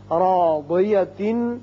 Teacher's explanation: را پر زبر ہے، اس کو پر پڑیں گے